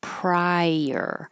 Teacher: Your tongue goes very high and then slides down for prior.